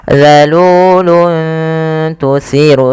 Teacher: menyamarkan suara tanwinnya atau suara nunnya dirubah kepada huruf ta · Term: ikhfa